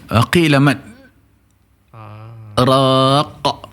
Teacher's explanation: Ada sakta kan, ikut Hafs dan Asim lah, seperti tertahan kan